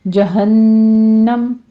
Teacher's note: جہنم نون مشدد ہے، غنہ واجبہ کریں گے، یہاں بھی 2 کاؤنٹ کرنا ہے.